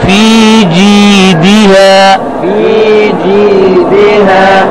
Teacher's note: دال کا زیر معروف پڑھیں گے، دیہا غلط ہے